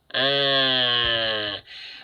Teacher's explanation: Bunyi 'ha' kecil itu berasal dari bagian tengah tenggorokan. Lihat ini. Ada tanda di sana, di tengah tenggorokan, sama seperti sebelumnya.